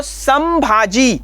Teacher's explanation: संपूर्ण शब्द का उच्चारण करते समय हमें म बीच में लेना पड़ता है इसलिए वहां पर जो अनुस्वार है वह म के जैसा हमें इस्तेमाल करना पड़ता है